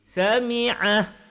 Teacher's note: Kita berhenti, maka mat hilang kalau berhenti.